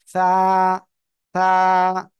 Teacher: জিহ্বার আগা, সামনের উপরের দুই দাঁতের আগার সঙ্গে লাগাবেন, লাগিয়ে আপনি উচ্চারণ করবেন।